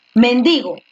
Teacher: Mendigo, era grave porque la fuerza de voz está en di.